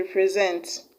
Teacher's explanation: represent has its stress on the last syllable, that is on SENT.